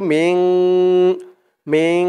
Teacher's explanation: মিম দিয়ে নুন ধরবে, এখানে ইকফা গুন্না হবে